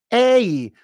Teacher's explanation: Think of it like this with a hidden Y after it. And I want you to shape it. Hit it high. And pull up this Y. That'll raise the vowel.